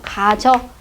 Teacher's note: 이 모음과 지읒이 발음 나는 위치가 같아서 가지어 그러면 발음이요 너무 좀 약간 거북스럽죠